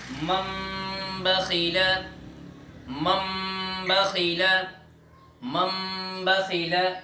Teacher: نون ساکن اور نون تنوین کو میم سے بدل دیں گے اور غنے کے ساتھ پڑھیں گے، یعنی یہ چھوٹی سی جو میم ہے اس سے بدل دیں گے اور غنے کے ساتھ پڑھیں گے۔ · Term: اقلاب